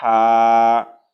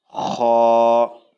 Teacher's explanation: جیم، حا، خا، ایک باریک ہا اور ایک موٹی کھا۔